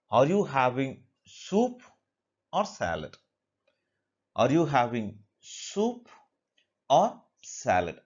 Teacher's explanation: So especially when we go for choices, alternative questions. So we have the first part as rising intonation and the second part as falling intonation. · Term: rise fall